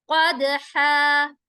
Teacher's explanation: قاف موٹا ہوگا اور دال پر قلقلہ کریں گے. حا, حا حروف حلقی میں سے ہے, بیچ کے حلق سے آواز نکالیں گے ہا کی.